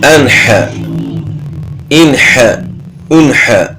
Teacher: حا حروف حلقی میں سے ہے تو یہاں اظہار ہوگا